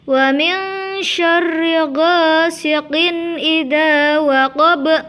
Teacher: Selanjutnya lafaz waqab juga harus dipantulkan seperti ayat pertama dan kedua tadi, di mana di situ ada bacaan qalqalah kubra berupa ba di akhir kalimat. Mari kita lanjut ayat keempat. · Sama seperti ayat kedua tadi, di situ ada lafaz min syarri, maka harus dibaca mendengung karena merupakan bacaan ikhfa hakiki di mana ada nun sukun bertemu dengan huruf shin. Sedangkan untuk lafaz ghasiqin merupakan bacaan idhar khalqi karena itu harus dibaca terang dan jelas di mana di situ ada tanwin bertemu dengan alif.